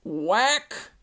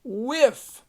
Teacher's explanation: now we got the unvoiced W sound the wh and it's actually backwards in the dictionary they'll actually spell it